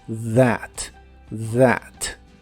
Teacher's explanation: la th se pronuncia como una d vibrante